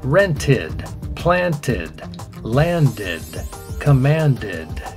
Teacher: When the verb in its original form ends with a T or D, the pronunciation of the ending of that verb in the past is id or id. Here are some examples: rented, planted, landed, commanded. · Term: id sound